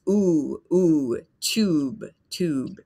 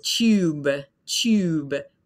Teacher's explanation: So it's really just ooh, ooh, tube, tube. In the British English, they often add kind of a Y sound there.